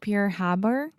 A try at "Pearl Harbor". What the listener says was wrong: Sounded like you were trying to say pure bar. Pearl Yes, that RL combination can be quite difficult for a lot of Brazilians and Portuguese speakers.